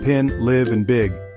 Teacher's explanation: I as in kit is short, high, and front heard in pin, live, and big. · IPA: ɪ